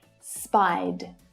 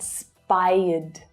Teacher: if a regular verb ends in a vowel sound, like spy, for example, then the ed is pronounced as a d as well. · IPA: /d/